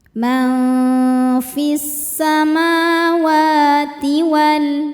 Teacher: Wa mad thabi'i muqaddar karena ada huruf waw berharakat fathah panjang. Cara bacanya panjang dua harakat.